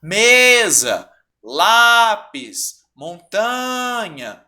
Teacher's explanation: é a penúltima sílaba tônica mesa lápis montanha tá vendo tô esticando todas elas que eu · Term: paroxítonas